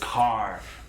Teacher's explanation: english accents it's non-rhotic so we don't use that r but in the west country that r is pronounced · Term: rhotic r